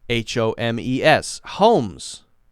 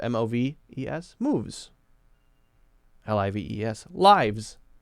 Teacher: There are a lot of cases when you have the silent E, and then the sound before the silent E is voiced, then often the S, to make it plural, is going to be the Z sound